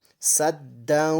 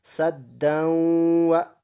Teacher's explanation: گنہ کے ساتھ ملا کر پڑھیں گے